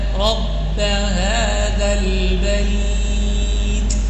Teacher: پا نہیں بلکہ با کو با ہی پڑھنا ہے. رب هذا البيت، اور آخر میں تا آ رہا ہے.